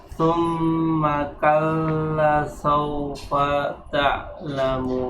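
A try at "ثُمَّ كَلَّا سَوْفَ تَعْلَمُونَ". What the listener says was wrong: Ingat ya, sin mempunyai sifat sofir. Saufa, jangan dihilangkan. Tsumma kalla saufa. Karena itu yang mencirikan. Karena kalau sa itu beda, walaupun dia tidak mempunyai sifat sofir.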